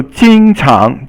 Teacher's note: 经 常 is first tone and second tone. So 经 is first, 常 is second.